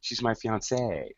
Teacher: there's more stress on the ending for the girl